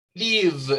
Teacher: El verbo live, si usted se pone la mano acá, cuando suena live, Live, ese v, ese sonido final es un voiced sound porque hay vibración aquí